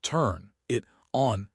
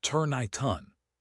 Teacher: Native says, turn I ton. The N moves to the I. The T moves to the O. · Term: linking